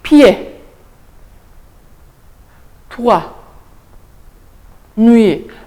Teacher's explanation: Le semi-consonne se prononce très vite et glisse vers la voyelle suivante.